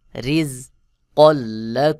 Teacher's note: তানবিনের পরে লাম ইদগামের হরফ এখানে গুন্না ছাড়া মিলায় পড়তে হবে